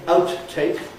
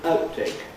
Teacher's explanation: the habitual thing to do is not to release the first consonant. So you don't say outtake but outtake and so on.